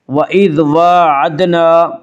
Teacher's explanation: کھڑا زبر کو ایک الف کے برابر کھینچ کر پڑھیں گے